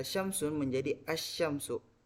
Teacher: Nah, pada saat dimasuki lam ta'rif, itu terjadi asimilasi antara huruf lam dengan huruf shin yang merubahnya menjadi dari kata syamsun menjadi asyamsu. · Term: asimilasi total